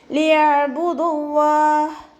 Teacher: തൊണ്ടയുടെ മധ്യഭാഗത്തു നിന്നാണ് അയിന് പുറപ്പെടുന്നത്. അതിൻ്റെ സൗണ്ട് ക്ലിയർ ആക്കി കൊടുക്കുക.